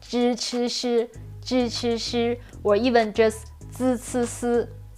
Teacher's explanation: people pronounce 支吃诗 with a super flat tongue position